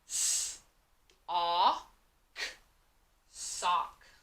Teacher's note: So when I say sock, I only hear short O. I just hear ah. I don't hear the letter O.